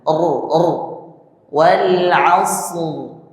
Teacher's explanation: suaranya diangkat ke langit-langit ditebalkan